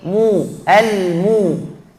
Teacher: Jelaskan dhammat mim bukan mo. Al-mustaqim bukan mo tapi mu.